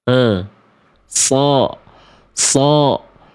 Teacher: Jadi, si huruf shad itu dilafalkan dari ujung lidah kita ke gigi seri bawah.